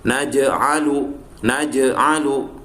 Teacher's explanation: Harokat jim berharokat sukun. Nah, berarti ini adalah qalqalah sugro dan dibaca memantul.